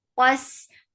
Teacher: qaf is heavy for fatha open jaws, attached with sin. Sin will get sifa of rakhawa.